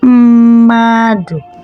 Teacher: But when you're pronouncing it, the first m sounds like then we have madu. So it simply means that the first m is functioning as vowel, while the second m is functioning as consonant.